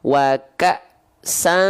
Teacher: Bunyi sannya itu bunyi n-nya disamarkan, dengungkan. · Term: ikhfa hakiki